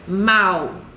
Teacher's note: Quando você fala mal, o A tá bem forte, né? E o U é mais fraquinho. Olha como é que eu coloquei o Minion aí, forte, o A, e o pequenininho, que é uma semivogal, ele tá se apoiando, ele não consegue ficar em pé sozinho. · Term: ditongo